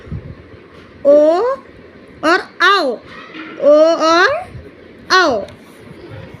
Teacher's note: और कंठ ओष्ठ का मतलब होता है जो अपना कंठ और ओठ के सब माध्यम से बोला जाए। तो कंठ और ओष्ठ के माध्यम से बोला जाने वाला शब्द है ओ और आओ